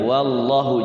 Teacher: lafadz Allah dibaca tafkhim ya wallahu jangan sampai wallahu jadi lidahnya nyentuh langit-langit ya wallahu